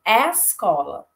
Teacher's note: Então, por exemplo, a palavra escola, em alguns dialetos do português, ela pode ser encontrada como escola. Ou seja, numa posição pré-tônica, eu posso encontrar aí uma média-baixa em alguns dialetos do nosso português brasileiro